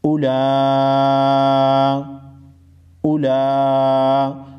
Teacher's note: لام کے اوپر کڑا زبر ہے، کڑا زبر کی صورت میں ایک الف کی مقدار کھینچ کر پڑھیں گے